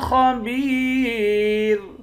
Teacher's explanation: خا کو موٹا پڑھیں گے، با کو یا کے ساتھ ملا کر یا کو ایک الف کی مقدار کھینچ کر پڑھیں گے، یا حروف مدہ ہے، آخر میں را ساکن ہے۔